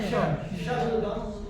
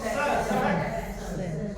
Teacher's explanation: जब तालव्य शकार बोलेंगे तो श जैसे आवाज श, शब्दम। और दंत्य सकार बोलेंगे तो स, सड़क